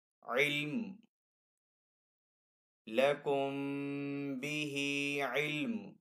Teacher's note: میم کی آواز آئے گی اور دو پیش کو نہیں پڑھیں گے · لیکن یہاں پہ وف کرنا بہتر ہے. وف کرنے کی صورت میں میم کو ساکن کریں گے.